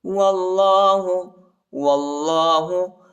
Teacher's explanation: اللہ کے نام کو موٹا پڑھیں گے، پر پڑھیں گے